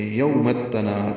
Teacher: تا سے مل رہا ہے، الف لام نہیں پڑھا جا رہا، تناد میں نون کو لمبا کریں گے اور دال ساکن پہ قلقلہ کریں گے